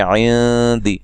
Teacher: نون ساکن کا یہاں اخفا ہے باریک